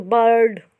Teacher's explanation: इसमें आय जो है वो आय का साउंड नहीं दे रहा, ए का साउंड दे रहा है